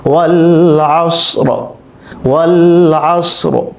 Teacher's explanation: কায়দা হচ্ছে র সাকিন এর পূর্বে সাকিন, এর পূর্বে যদি জবর হয় অথবা পেশ হয় তাহলে সেক্ষেত্রে আমাদেরকে রকে পোর করে পড়তে হবে। আমরা যদি এখানে ওয়াকফ করতে চাই তাহলে রকে পোর করে পড়তে হবে।